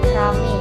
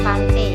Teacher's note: Pantai diucapkan pante. Perubahan ini terjadi pada bunyi vokal rangkap ai ke vokal tunggal e. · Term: monoftongisasi